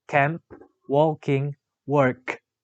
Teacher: The description of k is voiceless velar stop.